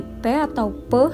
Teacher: Yang pertama, di sini ada bunyi P atau P, yang mana bunyi ini dihasilkan oleh bilabial atau dua bibir dan letupan